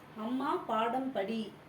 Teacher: இந்த சொற்கள்ல மகர மெய் எழுத்து தனக்குரிய அரை மாத்திரையில் ஒலிக்கிறது